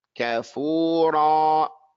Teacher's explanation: When we make the ra, we make it an aleph. Make the length of the wow and the length of the aleph when we elongate it the same.